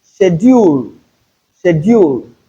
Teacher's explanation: take note of the first sound in that word. It is sh and not sk.